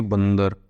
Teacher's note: बंदर बोलेंगे तो नाक से हवा निकल रही है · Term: अनुस्वार